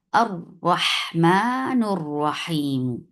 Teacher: یہ دیکھیں، اسم ہونے کی وجہ سے اس کو فتح دیا، اور لام الشمسیہ ہونے کی وجہ سے اس لام کو ہم نے ادغام کر دیا، اور ہم نے حمزۃ الوصل کو اگلے حرف جو را ہے اس کے بیچ میں ادغام کر دیا.